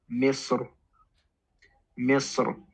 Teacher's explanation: When stopping on this word, ra can be pronounced with a full mouth or with an empty mouth, but the preference is you pronounce it with a full mouth